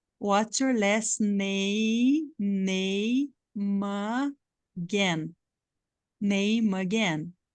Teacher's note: Esse E não existe na fala e o M vai fazer parte da próxima sílaba.